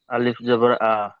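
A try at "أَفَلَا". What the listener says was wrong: লাম আলিফ জবর লা, আ হয় না, লাম আলিফ জবর লা, আফালা।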